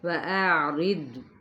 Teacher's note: واو ہونٹوں کی نا تمام گلائی کے ساتھ، را کی زیر کو دود کے ساتھ ملائیں گے، دود پر ہے جبکہ را باریک ہے۔